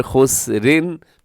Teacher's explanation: را باریک پڑھی جائے گی، موٹی نہیں پڑھی جائے گی، کیونکہ اس را کے نیچے حرکت ہے